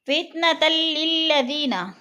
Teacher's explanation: 2 زبر تنوین کے بعد لام مشدد ہے تو ادھر ادغام ہو رہا ہے، یعنی لفظ کو جمع کر سختی سے پڑھیں گے. للذین، ذی پہ یا مدہ ہے، یا مدہ کو ایک الف 2 حرکات کے برابر کھینچ کر پڑھنا ہے.